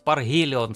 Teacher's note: Чему-то хочется сказать «Паргелион» с таким фрикативным «Г», да. А потому что, да, фрикативно, тут хорошо «РГ», потому что оно так сочетается.